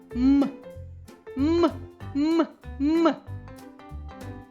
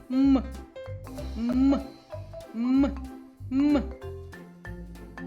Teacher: чи заважають губи зуби або язик видихуваному повітрю вільно виходити з ротової порожнини коли ти вимовляєш звук м м м м так заважають губи